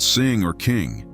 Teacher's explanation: Hold that NG sound. Feel the back of your tongue hit the roof. Now swallow and create a suction hold.